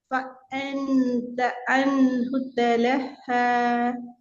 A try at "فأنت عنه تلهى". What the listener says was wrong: ஃபஅ அல்ல ஃபஅ. فأ நோமலாக அ அ فأنت அந்த உள்ளுக்கு எடுக்குறீங்க. நல்ல வாயில முன்பகுதியில் எடுங்க. கஷ்டப்படக்கூடாது. நோமலா. ஐன போஸ்ட் பண்ணணும்.